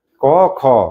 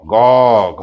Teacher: প্রথম দুটাই কম গম্ভীর, আর থার্ড আর ফোর্থে বেশি গম্ভীর, একদম গম্ভীর।